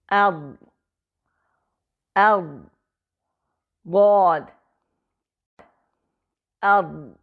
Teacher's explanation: इसकी आवाज जारी तो रहेगी मगर बाहर आती हुई महसूस नहीं होगी बल्कि ऐसी आवाज होगी गोया वह अंदर की तरफ जा रही है